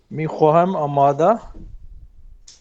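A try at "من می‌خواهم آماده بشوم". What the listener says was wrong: صحیح ہے، صحیح ہے.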